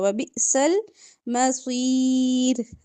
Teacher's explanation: وَبِئْسَ الْمَصِيرُ را باریک صاد موٹا